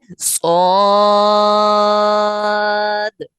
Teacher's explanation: مد لازم کی جو لمبائی ہے وہ 3 الف یعنی 6 حرکات کے برابر ہے